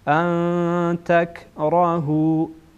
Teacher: بعد از نون ساکن تا آمده، تا از حروف اخفا هست، اخفا میشه.